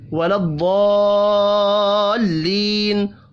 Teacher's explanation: ضاد پر پڑھا جائے گا، بڑی مد ہے یہ، اس کو 5 الف کے برابر کھینچ کر پڑھنا ہے